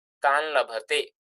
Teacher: So nakara changes into nasalized lakara.